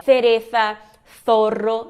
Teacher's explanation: na Espanha eles têm aquele som que é que nem o TH desvozeado aí do inglês, né? Então, língua entre os dentes, e aí fala cereza, zorro, né?